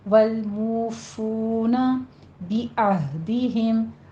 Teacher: عین کو وسط حلق سے ادا کریں گے اور ہا کو عکس حلق سے سینے کی جانب سے نہیں کہنا، ہا میں حمس نہیں ہونی چاہیے، موٹی آواز سے پڑھیں گے۔